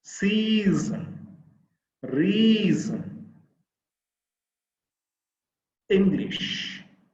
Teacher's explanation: there are two syllables the first syllable is stress because we take additional force to utter the sound